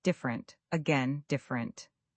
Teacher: Different, but we usually say dient, dropping the middle syllable almost entirely